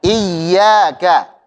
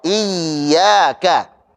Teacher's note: Jadi ditekan tapi sambil dialirkan suaranya karena punya sifat rakhawah.